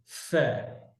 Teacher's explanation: উপরের দাঁত নিচের ঠোঁট, ফা, বাতাস ف দিয়ে শুরু হবে